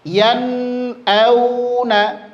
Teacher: Jadi tetap ngalir nunnya, bukan berarti idgham ketika ngalir nun ya.